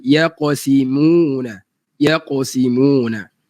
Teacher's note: Nipiskan mim walaupun dia baris depan.